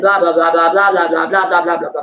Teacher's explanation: generally the Russian pitch variation stays in this sort of more monotone situation, and we go down at the end